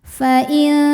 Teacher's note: bunyi nun sukun samar-samar siap-siap menuju makhraj huruf ta disertai bunyi dengungan dengungnya kecil karena ta makhrajnya masih dekat dengan Nun Fain tawallau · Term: ikhfa